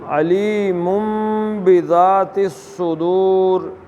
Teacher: علیم میں نون نہیں لانا بلکہ کیا پڑھنا ہے؟ میم۔